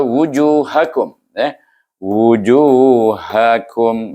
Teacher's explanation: Ju panjang, ha pendek, kum pun pendek, wu pun pendek.